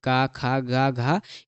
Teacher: का वर्ग में मतलब का खा गा घा ये सब जो आता है ना, इसमें सब क्या है कंठ का है